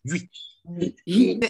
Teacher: 就比较紧张，而且短促